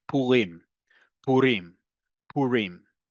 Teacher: the emphasis on the last syllable, like I just said, where the default is in modern Hebrew